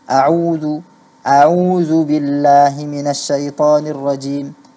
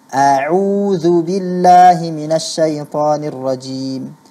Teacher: huruf ainnya juga kedengaran terganti menjadi waw yang bertanda sukun